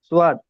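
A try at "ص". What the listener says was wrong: টান দেন, সোয়াদ হরফে তিন আলিফ পরিমাণ টান আছে শোনা ভাই।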